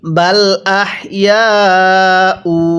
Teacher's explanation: এই যে ইয়ায়ের মধ্যে কিন্তু আমরা চার আলিফ টান দিব, কারণ মদের হরফের উপর এরকম মোটা চিহ্ন, এরপরে যদি এরকম গোল হামজা থাকে তাহলে সেখানে 4 আলিফ টেনে পড়তে হবে।